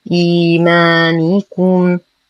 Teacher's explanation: أيضا لدينا ألف صغيرة خنجرية ما قبلها مفتوح فهو مد طبيعي · نتم كسرة النون ضمة الكاف بعدها ميم ساكنة وبعد الميم كاف متحركة فالحكم إظهار الشفوي مع غنة ناقصة